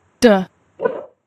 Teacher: d, sound d, একটু খেয়াল করবেন, এবং ভোকাল কর্ডটাও খেয়াল করবেন। d, দেখেন ওখানে ভাইব্রেশন হচ্ছে, হ্যাঁ, ভোকাল কর্ডে